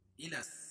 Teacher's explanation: یہ لام کو سین میں ملا رہے ہیں، اور یہاں لام دوسری والی لام نہیں پڑھی جا رہی، تو یہ حروف شمسیہ ہے.